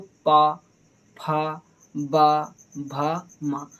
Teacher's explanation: इस पा वर्ग के जितने भी वर्ण होंगे उनको बोलते समय हमारे होठों की आवश्यकता होगी। तो हमारे होठ जो होंगे वो दोनों होठों से चिपक करके जाएंगे। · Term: ओष्ठ